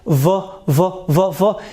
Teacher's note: And if we go for the v sound, v, so if you put your face here, your hand here, so you will feel vibration, v. You add some voicing sound to the f sound, like v. So you feel a kind of vibration. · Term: voice sound